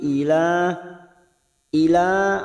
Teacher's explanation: ada Mad yang bertemu dengan Hamzah di lain kalimat Mad Jaiz munfasil lima harakat